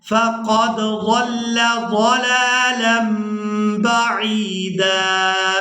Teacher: اب یہاں پر آپ لوگ یہ چھوٹی میم دیکھ رہے ہیں، یہاں پر ہم نے کرنا ہے اقلاب، یعنی تنوین کے بعد با گئی ہے تو یہاں تنوین میں جو نون کی آواز ہے اس کو ہم نے میم کے ساتھ بدل کر ادا کرنا ہے